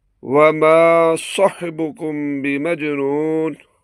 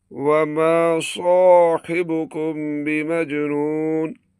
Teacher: یہاں صاحبکم میں الف کا صحیح کھینچاؤ ضروری ہے، بغیر الف نکالے تلاوت ادھوری ہو جاتی ہے۔ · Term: الف مدہ